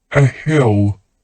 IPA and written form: ə hɪl (a hill)